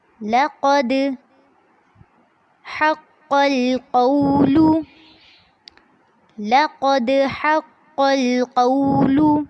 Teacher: لقد میں قاف کو پر کرنا ہے اور دال پر جھٹکا کرنا ہے، جس کو کہتے ہیں قلقلہ